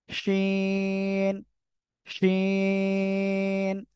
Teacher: শাসা শব্দ করে উচ্চারণ হবে জিহ্বার মধ্যখান তার বরাবর উপরে তালুর সঙ্গে লাগিয়ে